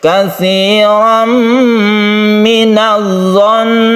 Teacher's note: Amanujtanibu katsiran kita gunakan di sini karena dia itu idgham bigunnah, tanwin bertemu dengan mim. Idgham artinya masuk ke huruf mim, artinya tanwin ini suaranya masuk ke mim sehingga membentuk tasydid mim. Sementara tasydid mim itu adalah digunakan, maka disebut dengan idgham bigunnah.